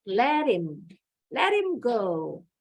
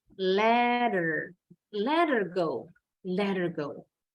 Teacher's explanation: Kalau orang Amerika, orang Inggris, when they speak in everyday conversation, they often drop the H consonant in the word her, him, his.